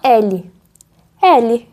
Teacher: O som praticamente não muda, porque L é oral. O ar não passa pelo nariz.